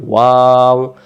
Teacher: ওয়াও অক্ষর দুই ঠোঁটের মাঝখানের ফাঁকা থেকে পড়তে হয়